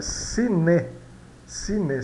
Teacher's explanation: no final das palavras soa e e não i